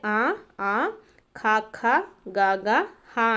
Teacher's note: కంఠముల నుండి పుట్టినవి కాబట్టి కంఠ్యములు అంటాము